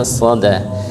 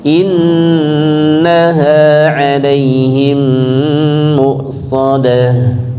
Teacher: diangkat pangkal lidah agar dia tebal, ya, so, dan kalau bisa tanpa memonyongkan bibir, ya, yang penting dia tebal dan terangkat, so, bukan dengan memonyongkan bibir tapi dengan mengangkat pangkal lidah dan menebalkan, ya, termasuk ini ditempelkan ke langit-langit bagian atas, so, ya, soda.